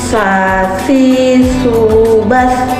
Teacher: Cara melafalkannya dengan menyentuhkan ujung lidah dengan dinding gigi seri bagian atas. Kemudian mengucapkannya dengan mengalirkan suara dan nafas yang lembut. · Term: huruf Sa